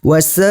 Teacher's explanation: hukum bacaannya adalah mad wajib muttasil, dibaca sebanyak 5 harokat.